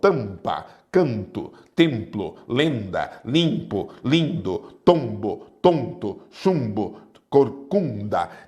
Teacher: É o A, E, I, O, U com som nasal